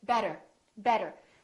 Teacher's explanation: the tea sounds more like a D sound or what we call a very fast D